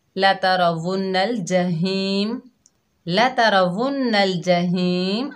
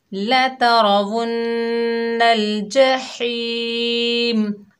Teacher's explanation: نون مشدد میں ہم غنہ کر رہے ہیں، ہا کو حلق کے درمیان سے ادا کر رہے ہیں